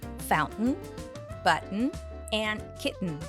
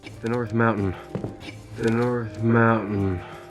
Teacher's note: flow in your mouth instead of fully releasing the T sound it sounds like a quick pause when you close your vocal cords and then quickly release the air